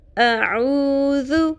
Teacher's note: ذال نرمی سے پڑھنا ہے، بزنگ ساؤنڈ بھی نہ آئے اور سیٹی کی بھی آواز نہ آئے، ٹھیک ہے؟ نرمی کے ساتھ ادا کرنا ہے۔ · اس میں عو مد اصلی ہے اور ذو شارٹ ہے